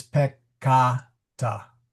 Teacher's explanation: this vowel is long, so it is peccata, since the A in the second syllable is long.